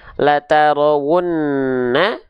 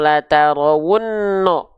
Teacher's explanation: Kalau dibaca dengan vokal O, maka dia termasuk ke dalam huruf yang tebal. Kalau vokal A itu termasuk ke dalam huruf yang harus dilafalkan dengan keadaan yang tipis. Kalau vokal O, dia harus dibaca dalam keadaan yang tebal.